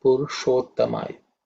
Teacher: This sh, as we all know, it's a cerebral sh, so the tongue should be pointing up towards the roof of the mouth when we say it